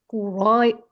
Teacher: Shin-nya jangan ke sin ya itu shin.